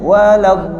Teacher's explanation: Huruf dha ni dia tak ada qalqalah dan dia kena hidup. · Jadi huruf dha ni kena tekan kat makhraj. Jadi gigi kita rapat dan fokus gigi lidah kita, tepi lidah kita fokus pada gigi geraham belah atas. Jangan moncong.